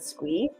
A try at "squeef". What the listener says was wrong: Squeef. With the F. Squeef.